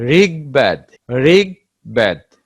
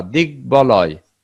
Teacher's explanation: গ সঙ্গে যখন ব ফলা যুক্ত হয়, সেক্ষেত্রেও ব এর উচ্চারণ স্বাভাবিক থাকে